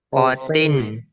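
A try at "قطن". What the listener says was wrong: Nah, ini jangan ketukar ke tak. Tebal.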